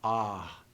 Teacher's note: you can kind of hear the remnant of an H sound at the end of The Vowel